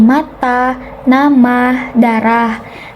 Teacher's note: Vokal A ini bisa dilihat dalam rendah, bawah, depan pada dengan bagian mulut yang terbuka